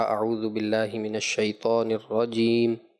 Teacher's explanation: تعوذ جب آپ نے اختتام کیا تو یوں پڑھا اعوذ باللہ من الشیطان الرجیم، مقدار پوری نہیں کی مد عارض کی